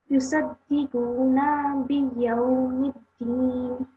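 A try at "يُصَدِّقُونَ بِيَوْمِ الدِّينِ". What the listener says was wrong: So again, there's to be a bit more emphasis on the dal with the shadda. So yusaddiquna.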